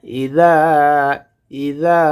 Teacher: জালটা জিব্বার আগা সামনের দুই দাঁতের আগার সঙ্গে লাগাইয়ে উচ্চারণ করতে হবে